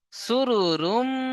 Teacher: তারপরে দেখেন, ফিহা সুরুরুম, সিন পেশ সু, র পেশ রু, সুরু, র মিম পেশ রুম, গুন্না করতে হবে। মিম তাসদিদ কে গুন্না করা কি ওয়াজিব, তাই মিম তাসদিদ কে আমরা গুন্না করব।